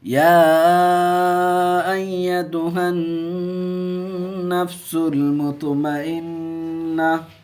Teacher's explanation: نون پہ تشدید ہے، گنہ کر کے پڑھیں گے اور ہا کو نون سے ملائیں گے، الف لام سرین میں رہے گا.